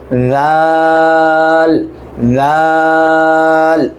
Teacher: জিহ্বাটা বের করতে হবে, জিহ্বাটা মুখ থেকে আংশিক বের করবেন, তারপর জাল জাল এটা হবে।